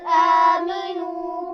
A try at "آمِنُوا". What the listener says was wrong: آمینو میم کے نیچے زیر ہے، دیکھیے آمینو، توجہ سے پڑھیے.